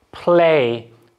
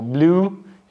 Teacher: in blue you will feel that there's vibration and play will feel that there is no vibration